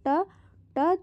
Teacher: हमारा जो जीभ है तालू के पीछे टच हो रहा है यानी कि मुर्धा से हो रहा है